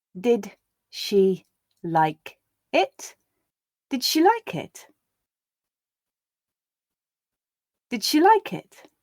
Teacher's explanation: And again, this tends to be a very, very subtle thing, just noticeable where the voicing of the d is carried over into the beginning of the sh, giving that j feel